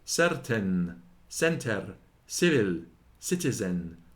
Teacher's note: Before e and e it hath a weak sound, and hisseth like s